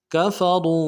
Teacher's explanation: काफ को नरम से अदा करेंगे, फा को नरम से अदा करेंगे, वाव को मोटा करेंगे , वाव के साथ मिलाएंगे, वाव मद्दा एक अलिफ दाल में